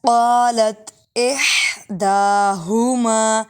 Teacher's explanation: پہلا جو ہا ہے وہ باریک ہے اور دوسرا ہا موٹا ہے۔